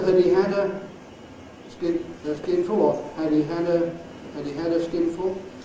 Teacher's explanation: the first one (‘Had’) can either be /həd/ or /hæd/